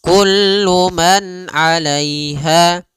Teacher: Kemudian kullu man alaiha fan pada lafal kullu man a di sini ada izhar halqi yaitu suara nunnya dibaca dengan jelas ketika bertemu dengan huruf ain